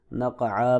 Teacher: سے ہے، ساکن ہے لہذا یہاں پہ قلقلہ بھی کریں گے، عین کے اوپر دو زبریں ہیں، اخفا بھی کریں گے ملانے کی صورت میں، وقف کی صورت میں نقعا پڑھیں گے